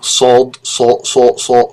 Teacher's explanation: there but they don't exist as separate consonants these are emphatics they are pronounced with a secondary articulation with the back of the throat being pulled down or being lowered